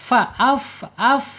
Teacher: secara sifat ada di al-hams. Al-hams, alirkan suaranya